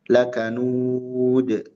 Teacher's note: Lakaud qalqalah fidal waqfan qalqalah pada huruf dal ketika waqaf